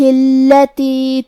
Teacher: لام پہ تشدید ہے تو ہمیں 2 حرف کے برابر لام کو پڑھنا ہے